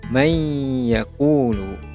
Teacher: Nun sakinah bertemu dengan huruf ya, maka hukumnya adalah hukum idgham ma'al ghunnah, manakala bacaannya ialah dengan D, menunjukkan perlu dengung.